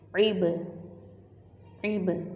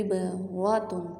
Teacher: عبرۃ، با کے جزم ہے، عین کی زیر کو با کے ساتھ ملائیں گے اور با حرف قلقلہ ہے اس لیے ہم اس کو ہلائیں گے۔ عب، را کے اوپر فتحہ زبر ہے، اس کو ہم نے موٹا پڑھنا ہے۔